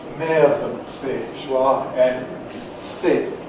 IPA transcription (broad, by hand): ˈmɪəðəntsi